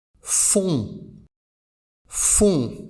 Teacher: c'est-à-dire basse et amassée dans le fond de la bouche les mâchoires sont légèrement plus resserré avec la voyelle on